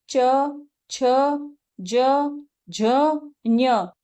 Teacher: जीभ हमारी क्या कर रही है? तालों को टच कर रही है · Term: तालव्य वर्ण